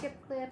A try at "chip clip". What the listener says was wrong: Sounds like you're saying chick clip. A chick.